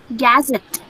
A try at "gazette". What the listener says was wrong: Not gazette. Where is the stress? Where is the stress? When you say gazette, you're stressing g. But here, this syllable should be stressed. So it should be gazette. Gazette. This is gazette.